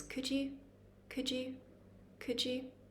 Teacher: Could and you actually get pushed together when we say this.